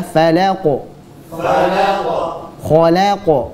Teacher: Qaf kita pantulkan dengan tebal pula.